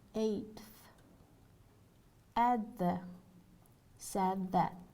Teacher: D, dental, before the and th